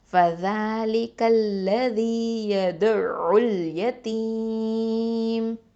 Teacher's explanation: இப்போது வக்ஃபு பண்ணுறதுனால மீமுக்கு வந்து என்ன பண்ணுவோம், சுகுன் வச்சுருவோம். அப்போ மத்தல் ஆரிதல் சுகுன் சட்டம் 4 ஹரக்கத் அளவுக்கு வரைக்கும் நீட்டுவோம்